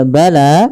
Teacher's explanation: panjangkan huruf lanya sepanjang dua harakat. Karena la di sini ada alif kecil yang datang setelahnya dan ia berada di atas huruf ya. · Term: mad thabi'i